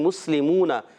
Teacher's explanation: سین کو سیٹی کے ساتھ ادا کریں گے